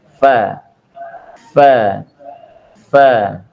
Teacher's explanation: Jadi untuk melafadzkan huruf fa supaya bisa keluar bunyi fa-nya dengan benar, maka kita letakkan ujung gigi seri kita menempel dengan bagian bawah bibir kita, bagian dalam tengah. Fa, fa, fa.